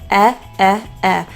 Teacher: The eh vowel, as in bed, has a very neutral jaw opening. So our jaw isn't entirely shut, but it's definitely not open. Eh. So the teeth are slightly apart, but they're pretty much in that kind of closed position.